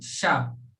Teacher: दूसरा आता है तालव्य सा, जिसका उच्चारण होता है शा, यानी जिह्वा को तालु से लगाकर और हवा को बाहर की ओर छोड़ने की क्रिया वो शा का उच्चारण उपस्थित करती है